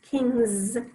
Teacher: Kings has the Z sound at the end, but of course we're still going to spell it with an S.